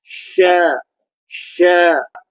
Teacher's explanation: Di mana tengah lidah ni, tengah lidah bertemu dengan lelangit keras.